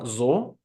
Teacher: la letra s se pronunciará como una fricativa alveolar sonora es decir dejaremos salir el aire mientras lo estamos friccionando con la punta de la lengua contra el alveolo y a la vez estamos haciendo vibrar las cuerdas vocales que